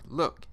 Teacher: L there are two phonetic sounds here the clear L and the dark L the clear appears in the word look in English